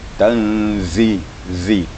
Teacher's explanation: Zai itu memang agak kuat desisnya karena makhrajnya di ujung gigi, di ujung lidah ya, dengan merapatkan semua gigi. Tanzi, zi, di merapat, bergetar lidah kita, ujung lidah kita.